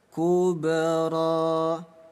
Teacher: Bunyi ba kita pantulkan, hukum qalqalah. Kubra. Ilhab ila fir'auna innahu tagha.